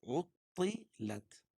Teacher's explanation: یہ طا کو پر پڑھیں گے، کیوں؟ اس لیے کہ حروف مستعلیہ میں سے ہے لت، یہاں باریک۔